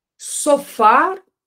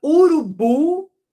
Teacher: tanto urubu quanto Sofá tem a última sílaba mais forte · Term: sílaba acentuada